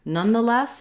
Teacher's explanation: it's the words none the and less we have the stress on less letter o in none has vowel schwa the ah sound you